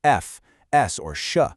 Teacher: Well, then you get a fricative. For these, you squeeze the air through a really tiny, narrow opening. And that squeezing action creates friction, which gives you that continuous hissing sound you hear in sounds like f, s, or sh.